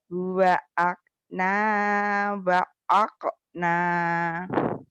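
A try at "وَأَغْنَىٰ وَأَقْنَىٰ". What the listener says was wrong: Wa aghna wa aqna. Hutangmu ya G-nya nggak bisa juga. Wa aghna wa aqna. Wa aghna wa aqna. Huwa aghna wa aqna. Huwa aghna wa aqna.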